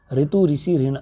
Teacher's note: ये ह्रस्व स्वर हैं क्योंकि इनको उच्चारण में दीर्घ स्वरों से कम समय लगता है। री का हिंदी में शुद्ध प्रयोग नहीं होने के कारण र प्लस ई के उच्चारण के रूप में प्रयुक्त होता है